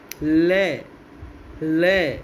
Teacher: दोनों साइड से, दोनों बगलों से श्वास वायु निकल जाती है। तो इन्हें हम कहते हैं पार्श्विक ध्वनियाँ या पार्श्विक व्यंजन।